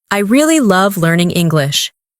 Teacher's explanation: Emphasize really and love.